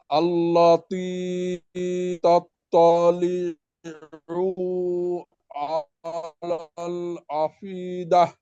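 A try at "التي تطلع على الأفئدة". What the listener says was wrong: তাত্তালিউ, পুতে একটু টান হয়ে গেছিল। আলাল আফ ইদা। আলাল আফ ইদা, বাতাস ভাতে বাতাস বের হয়। আফ ইদা।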